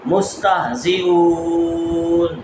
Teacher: ہا حمزہ جو حلق کے سب سے نیچے والے حصے سے سینے کی طرف سے ادا ہوگی